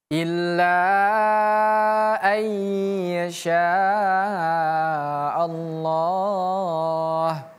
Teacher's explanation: Melebur bukan an lagi tapi langsung pindah ke huruf selanjutnya yaitu ya ay. Jadi bukan an yasya tapi ayyasya. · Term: idgham bighunah